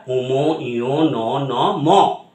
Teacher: নিঃশ্বাস বায়ু নাক দিয়ে বেরোচ্ছে, মুখ দিয়ে না বেরিয়ে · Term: নাসিক্য ধ্বনি